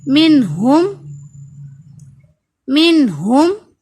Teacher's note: نون ساکن کے بعد ہا تو اظہار